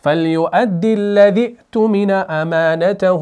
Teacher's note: حمزہ ساکن ہے تو جھٹکے کے ساتھ پڑھا جائے گا, تحقیق کے ساتھ